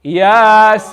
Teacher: So you need to make it 6 counts long. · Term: maddul lazim